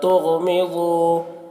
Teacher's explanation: تُغْمِضُوا، غین کو پر پڑھیں گے اور ضاد کو بھی پر پڑھیں گے کیونکہ یہ حروف مستعلیہ میں سے ہے